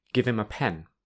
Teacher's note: the h in him often becomes im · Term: weak form